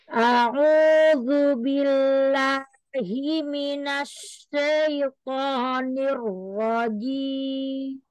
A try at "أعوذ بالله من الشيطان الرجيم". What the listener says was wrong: Sempurnakan fathah shinnya, Umi. Minasya, ya jangan miring suaranya. Minasyai, sya, syai.